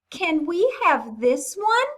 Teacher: we had to come up at the end to make it sound like a sentence. Our voice had to go up